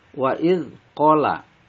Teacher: dibaca panjang, 2 harokat, dinamakan mad tabi'i karena fatha bertemu alif